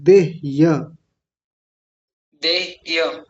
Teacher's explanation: देह य हकार आधा यकार पूरा